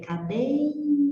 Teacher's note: aqui você tem vogal e tem semivogal, então é claro, você tem um ditongo decrescente